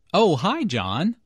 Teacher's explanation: notice the rising intonation here is excited to hear from john